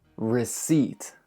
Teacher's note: In many words, we'll find silent P's, and this is one of them. Also, make sure to put stress on the eat